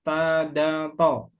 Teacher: Ujung lidah gusi atas